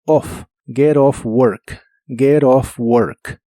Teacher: es común en inglés americano que la t de get se pronuncie como r cuando la palabra que le sigue empieza con vocal